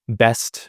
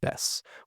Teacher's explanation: you might hear people just say the word best where you drop that t there